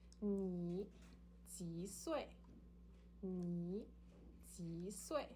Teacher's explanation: ji is third tone and sui is the fourth descending tone